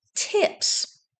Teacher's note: suffix s follows an unvoiced consonant the S is unvoiced